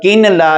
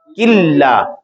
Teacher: کاف کے ساتھ نون لام میں مدغم ہو گیا، غنہ بھی نہیں ہوگا، مدغم ہوگا. اس کو کامل ادغام کہتے ہیں.